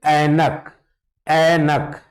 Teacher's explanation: कंठ और तालू दोनों का उच्चारण होता · तो कंठ और तालु दोनों का यूज होता है, कंठ तालव्य है ये